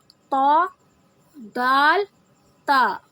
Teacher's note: زبان کی نوک سامنے اوپر والے 2 دانتوں کی جڑ سے لگے گی